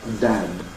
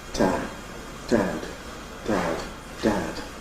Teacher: There is a degree of devoicing of the initial and final plosives